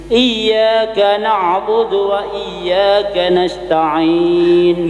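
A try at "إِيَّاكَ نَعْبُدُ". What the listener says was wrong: Diulangi, iyyaka na'budu jangan mantul. Iyyaka begitu.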